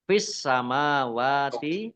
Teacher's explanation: alif lam samsiyah karena tidak dibaca. Langsung masuk ke huruf berikutnya yaitu sin, ditandai sinnya ada tasdidnya. Sinnya dibaca double. Mim fathah berdiri mat tobi'i, wawu fathah berdiri mat tobi'i, wa ma mim fathah alif juga mat tobi'i, masing-masing dibaca panjang 2 harokat.